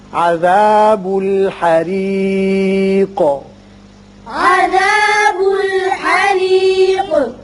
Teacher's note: یہ را باریک ہوگا اس لیے کہ نیچے کسرہ ہے اور قوف ساکن کر رہے ہیں لہذا اس کی صفت قلقلہ ادا کریں گے.